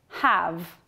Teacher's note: It is pronounced with the full vowel sound ah. In other words, it's pronounced in the strong form, have.